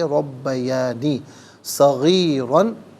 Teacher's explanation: را پر دو زبر کی تنوین، اسے پر کر کے پڑھا جائے گا ، اور جب وقف کریں گے تو الف سے چینج کریں